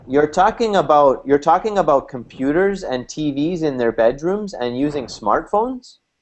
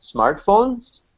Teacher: in this particular question, you'll notice my intonation does not start to go up until the very end. The last word, smartphones.